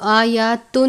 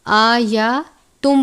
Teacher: تنوین کو میم مشدد سے ملا کر غنہ کر کے پڑھیں گے. جب ہم غنہ کریں گے تو آیاتن نہیں پڑھیں گے بلکہ آیاتم پڑھیں گے میم کی آواز کے ساتھ غنہ کر کے